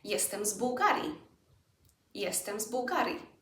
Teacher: B is a voiced consonant, therefore Z remains one as well.